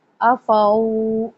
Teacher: واو ساکن سے پہلے زبر، واو لین نرمی سے